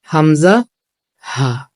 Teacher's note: তাহলে আমরা জানতে পারলাম যে এক নম্বর মাখরাজ হলো হলক অথবা কণ্ঠনালীর শুরু থেকে শক্তভাবে উচ্চারিত হয় দুটি হরফ। এক নম্বর হলো হামজা, দুই নম্বর হলো হা।